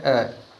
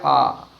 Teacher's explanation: इनके उच्चारण में भिन्नता है। पहला जो लेटर है वो कम समय में बोला जाएगा और उसके साथ दूसरा जो है वो अधिक समय में बोला जाएगा। इसलिए पहले स्वर को हम ह्रस्व कहते हैं और दूसरे स्वर को हम दीर्घ कहते हैं।